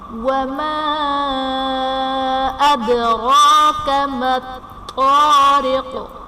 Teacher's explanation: وَمَا أَدْرَاكَ میں الف سے پہلے زبر ہے، الف مدہ کا قاعدہ، اور حرف مدہ کے بعد حمزہ دوسرے کلمہ میں ہے تو یہاں پر مد منفصل کا قاعدہ ہوگا۔ مَا الطَّارِقُ میں طا حرف قلقلہ مشدد ہے تو یہاں پر قلقلہ خوب جماؤ کے ساتھ ادا کریں گے